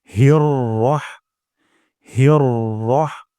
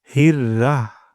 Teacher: হিয়র, এখানে আমাদের অনেক সময় এমনটি হয়ে যায় হির হয়ে যায়। এখানে হা চিকন হবে, র মোটা হবে। এবং আরেকটি ভুল হলো রহের জায়গায় রাহ হয়ে যায়।